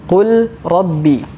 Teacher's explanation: Kemudian huruf lam sukun ini dimasukkan ke dalam huruf ra. Otomatis huruf lam ini menyesuaikan dengan huruf ra atau berubah menjadi huruf ra. Maka jadilah huruf ra ini double. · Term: idgham